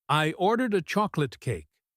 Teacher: She puts the stress on the word ordered. "I ordered a chocolate cake." This implies a bit of frustration.